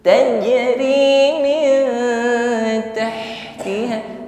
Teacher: Bersih ya, tidak marak sebagaimana huruf kha, bukan tahtiha. Tahtiha keluar dari makhraj wasatul halqi, tenggorokan tengah.